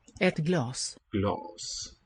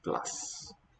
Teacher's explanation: the ah sound is going to be longer, glas, than in the word ice cream, glass.